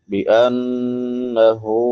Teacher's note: बिअन्नहु, नून मुशद्दद है, शद वाला नून, इस पे हमेशा गुन्ना होता है। गुन्ना आवाज़ को नाक में छुपा कर अदा करना एक अलिफ की मिकदार के बराबर। हा है बड़ी हा, हलक के आखिरी हिस्से से जो सीने के साथ मिला हुआ है वहाँ से अदा होती है, जिसको अक्सा हलक कहते हैं।